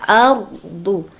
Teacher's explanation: Nah, patokannya bukan du itu, tapi a-nya itu bertemu dengan ro disebut dengan tafkim dibaca tebal